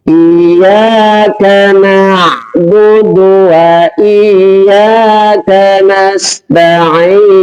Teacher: karena ainnya itu bukan keluar dari hidung ya, dari tenggorokan bagian tengah